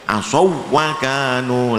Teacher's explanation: Kemudian semua huruf yang sama sukun bertemu sesamanya, kecuali ya, termasuk yang di akhir di baris bawah, bima asawwakanu, asawwakanu itu wawu sukun bertemu wawu tapi bukan mat, maka harus tetap idgham. Idghamnya jangan diberi dengung